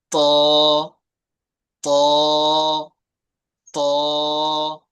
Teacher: জিহ্বার আগাটা উপরে যে সামনে দুটো বড় বড় দাঁত আছে না, এই দাঁতের গোড়ার সাথে লাগান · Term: ত এর মাখরাজ